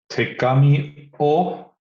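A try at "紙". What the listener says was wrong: So the paper is just kami.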